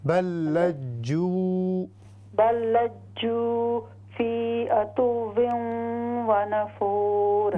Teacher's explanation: جو کو لمبا کریں گے، واو مدہ ہے نا